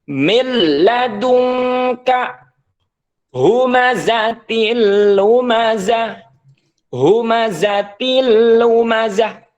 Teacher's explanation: tidak boleh panjang karena ini tanpa guna namanya idgham bila ghunah nun mati bertemu dengan lam ketika dibaca maka nunnya dihilangkan langsung dimasukkan ke lam seakan-akan lam ini bertasdid madunka humazatil lumazah humazatil lumazah tidak boleh didengungkan humazatil lumazah nah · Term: idgham bila guna